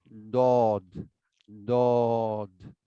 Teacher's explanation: জিহ্বার গোড়া উপরের তালুর ডান পাশের মাড়িতে লাগিয়ে দাঁতে লাগিয়ে অথবা বাম পাশে লাগিয়ে উচ্চারণ করব